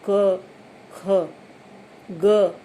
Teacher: तो जब हम इसका उच्चारण करते हैं क का, तो तुम करके देखो और तुम्हें ऐसा महसूस होगा कि जब तुम क कह रहे हो तब तुम अ भी साथ में कह रहे हो। क, ख, ग बोलते समय अ भी इसमें ऑटोमेटिकली इसका उच्चारण इसके साथ होता ही होता है।